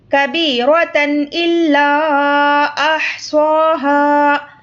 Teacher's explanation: تنوین میں جو نون کی آواز ہوتی ہے تو اس کو ہم یہاں پر ظاہر کر کے پڑھیں گے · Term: اظہار